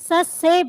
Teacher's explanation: से हम बोलते हैं तो दांत आपस में मिलते हैं, इसलिए इसको दंत या दंते का नाम दिया गया है